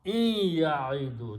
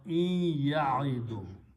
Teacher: if a ya and a noon are coming together, then noon changes into a gunna sound. So you pronounce in ya'idu.